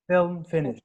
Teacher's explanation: Film does have a higher intonation. Finish has falling intonation